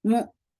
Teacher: Hamza will be very sharp, and the sound will cut off there, and then mu, mi, for kasra, give e sound.